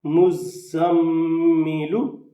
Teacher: اب یہاں زا کے اوپر سیٹی کی آواز ہوگی اور میم کے اوپر غنہ ہوگا۔